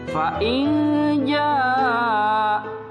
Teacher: nun sukun bertemu dengan huruf jim, maka dibacanya menjadi samar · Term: ikhfa